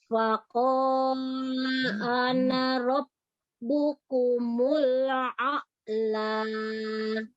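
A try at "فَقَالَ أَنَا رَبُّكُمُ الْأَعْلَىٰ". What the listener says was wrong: Nah, huruf qafnya matobi jangan terlalu panjang. Jadi kalau dia dibaca waqaf atau berhenti, alifnya dibaca. Alifnya jadi matobi ya, dibaca panjang ya.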